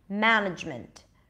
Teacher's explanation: two schwas at the end because we don't really need the vowel there